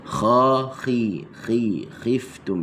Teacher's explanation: Huruf kha ni dia makhrajnya adalah di halqum adnal halq, halqum yang paling hampir dengan mulut.